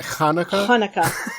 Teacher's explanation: Jewish people have that like guttural like sound with a lot of their H's